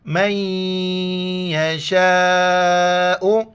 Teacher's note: شا، حمزہ پیش ہو، مد ہے 4 الف کی مقدار کھینچنا ہے